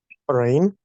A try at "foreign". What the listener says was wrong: No. Foreign. Вот это была фонетическая ошибка у вас. Несколько раз прозвучало. Непонятно сказано в начале слова, потом понятно, что это foreign, да?